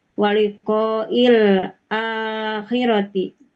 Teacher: A-nya panjang itu disebut mad badal.